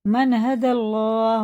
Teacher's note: یہ زبر کے ساتھ ہے تو پورا پڑھیں گے اللہ کا لام، یعنی منہ بھر کے موٹا کر کے